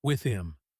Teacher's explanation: It sounds like the word im without the H.